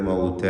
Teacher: അൽ മൗത എന്ന് അതിന് ഇസ്തിഫാലിൻ്റെ ഹർഫാണ്. അതിനെ ദീർഘിപ്പിക്കുന്ന അലിഫിൽ ഇസ്തിഫാലിൻ്റെ തർക്കീഖ് ഉണ്ടാവണം. മൗതോ എന്ന് പറയരുത്, മൗത.